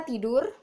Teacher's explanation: bunyi T itu mati, oral, dan apikodental, dan plosif